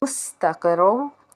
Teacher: سین حرف صفیریہ کا حرف، اس کو ہم نے جب پڑھنا ہے سٹی کی آواز آنی چاہیے